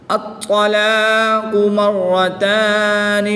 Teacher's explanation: طا حروف کلکلہ میں سے ہے، اور جب حروف کلکلہ مشدد ہوں تو ان میں کلکلہ خوب جماؤں کے ساتھ کرتے ہیں، تو ان میں کلکلہ خوب جماؤں کے ساتھ کریں گے۔ طا حروف مستعلیہ میں سے بھی ہے، اس کو پر یعنی موٹا بھی پڑھیں گے۔